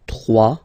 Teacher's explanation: Final s not pronounced.